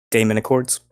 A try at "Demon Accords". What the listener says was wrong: no, it's actually Accords. Demon Accords. D-E-M. There's no A in that one.